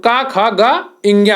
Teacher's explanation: का वर्ग जो होता है वो कंठ वर्ग होता है